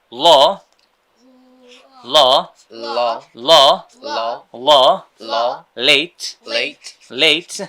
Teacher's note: জিভার সামনের অংশ উপরের দাঁতের গোড়ায় নিয়ে যেতে হবে